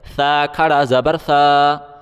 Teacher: سا کھڑا کو ایک الف کی مقدار کھینچ کے پڑھا جاتا ہے